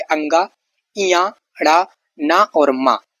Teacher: नाक से इनका उच्चारित होता है, यानी उच्चारण होता है। वर्ग का 5वां वर्ण है ये, हल्की मधुर ध्वनि में इनका उच्चारण होता है। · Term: नासिक्य